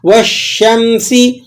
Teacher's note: واو کو ڈائریکٹ شین سے ملا کر پڑھنا ہے